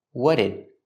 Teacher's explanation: So the T in what links with the D in did, and you hear a fast D. What did? Link the sounds.